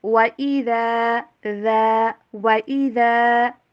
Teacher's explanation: وا کے اوپر ہونٹوں کو گول کرنا ہے، ڈبلیو والی ساؤنڈ کے اوپر اس کو پروناؤنس کیجئے، اور ذال کی آواز کلیئر ہونی چاہیے۔